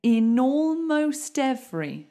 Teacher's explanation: Okay, so we can definitely do some linking here because look, we've got consonant, vowel, consonant, vowel. That's so easy to link.